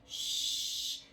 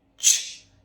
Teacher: shhh is a lot softer, our lips aren't as round, but when we do ch, there is a lot of force there